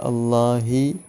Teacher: ആവും ഹാവും ഏകദേശം ഒരേ സ്ഥലത്ത് നിന്ന് തന്നെയാണ് വരുന്നത് ഹൽക്കിന്റെ താഴെ അറ്റത്തുനിന്നാണ് വരുന്നത് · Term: ഹാ ന്റെ മഹ്റജ്